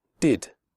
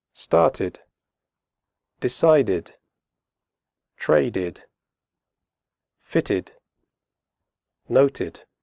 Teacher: after d and T the final Ed is pronounced ID as in did